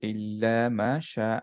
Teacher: হা হচ্ছে হামস letter হামসের বাতাস বের হতে হয়